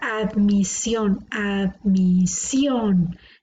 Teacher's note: la sílaba tónica está en la última por lo tanto es una palabra aguda